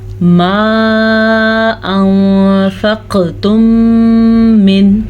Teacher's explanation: ये छोटी मद है लेकिन इसकी मिक़दार तकरीबन 2.5 सेकंड तक है, तो आपने इसको 2.5 सेकंड तक लंबा करना है।